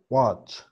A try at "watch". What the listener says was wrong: No tan marcada la A. Que no sea wa, que sea wa. Watch.